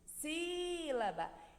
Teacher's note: Sílaba. Então, o si é o som mais forte dessa palavra. Então, essa é a sílaba tônica dessa palavra sílaba, é o si.